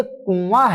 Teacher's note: اس نون کی آواز جو ہے ناک میں چھپ جاتی ہے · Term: نون غنہ